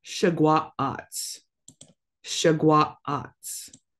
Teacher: Make sure you're pausing for that glottal stop